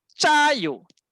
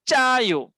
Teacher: Sebelum nak keluar A tu dia tahan dulu. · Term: tense